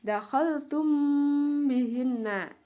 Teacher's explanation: Ikhfa syafawi terjadi apabila mim mati bertemu dengan huruf ba. Cara membacanya dengan menyamarkan bacaan mim mati di bibir sambil didengungkan